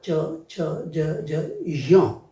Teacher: च वर्ग का उच्चारण तालु से है